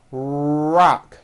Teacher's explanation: notice how my lips are coming forward and my tongue moves back in my mouth